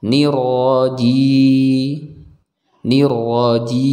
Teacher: karena ini ada ya mad Ya ya M maka kita baca panjang dua harakat